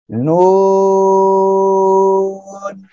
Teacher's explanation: জিব্বার আগা তার বরাবর উপরে তালুর সঙ্গে লাগিয়ে এই অক্ষরটা আমাদের উচ্চারণ করতে হবে। আর এই অক্ষরে চার এলিফ টেনে করতে হবে, সবাই একসাথে বলেন তো নু।